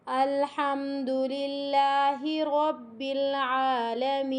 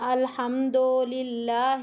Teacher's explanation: اس دال کو کھینچنے کی غلطی اور ہا کو کھینچنے کی غلطی، دونوں متحرک ہے، کسی کو بھی نہیں کھینچنا، اور اس کو ایسے بھی نہیں پڑھنا الحمد للہ، یہ غلط ہے۔